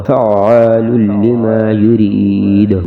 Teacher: فعین زبر فا، عین الف زبر عا، فعا لام لام پیش لل، فعال لام زیر لی، الف زبر ما، لما فعال لما، یا پیشو را یا زیر فی، یری دال پیش دو یرید، فعال لما یرید وقف میں دال پہ قلقلہ ہوگا